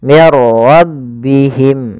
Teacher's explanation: ada nun mati atau tanwin bertemu dengan huruf ro cara membacanya masukkan nunnya kepada huruf ro sehingga suara nunnya hilang langsung terbaca dengan jelas Suara rnya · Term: bila gunah